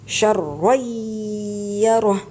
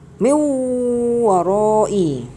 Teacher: Tanwin di sana ada seolah-olah ada nunnya. Makanya nunnya itu langsung masuk kepada huruf di depannya dengan didengungkan. Contoh syarwayyarah, itu non matinya atau tanwinnya langsung masuk kepada ya, makanya dinamakan guna.